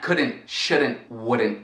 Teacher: E notem que eu não estou pronunciando o T no fim